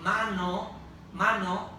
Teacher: a becomes nasal and That's Because of coarticulation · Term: nasalization